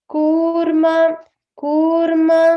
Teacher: stress on the ma and kurma is long